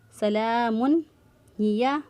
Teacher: تنوین کے بعد حرف حلقے میں سے ہا آ گیا تو اظہار کریں گے · ہا کو وسط حلق سے ادا کیا